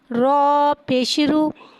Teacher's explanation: रॉ के ऊपर पेश है, पेश को होठों की गुलाई के साथ अदा करके पढ़ेंगे। रॉ के ऊपर पेश है, लिहाजा रॉ को यहाँ मोटा अदा करके पढ़ेंगे।